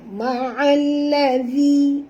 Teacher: Ma'alladhi, dhi di sini dua harakat asli dan makhraj dzal yang tuan-tuan di hujung lidah. Jadi lembut sebutannya.